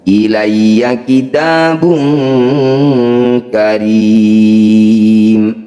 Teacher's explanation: Cara bacanya ri panjangkan 6 harokat, huruf terakhir sukunkan. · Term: mad arid disukun